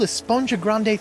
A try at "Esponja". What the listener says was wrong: Actually, it's pronounced Esponja with an H sound at the end.